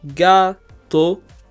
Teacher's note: we do stress the second to last syllable we stress the ga part